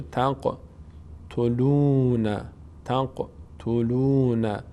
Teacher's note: خب تنق، این قاف قلقله میشه